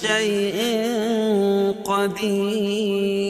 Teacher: رائے ساکنہ سے پہلے یا ساکن ہو تو رائے ساکنہ ہر حال میں باریک پڑھی جاتی ہے